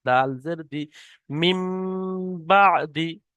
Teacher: নুন সাকিন কে মিমের দ্বারা পরিবর্তন করে এক আলিফ পরিমাণ গুন্না সহ পড়তে হবে। অর্থাৎ তানবিন বা নুন এই নুনটার পরিবর্তে বা পড় নুনটার পরিবর্তে মিম পড়তে হবে। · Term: ইকলাব